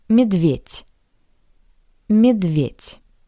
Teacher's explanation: Similarly to the previous word, the voiced consonant D sounds like the paired voiceless consonant T